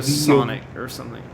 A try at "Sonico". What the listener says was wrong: There's an O at the end. Sonico.